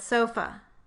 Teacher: the second vowel in the word sofa. And we call its symbol schwa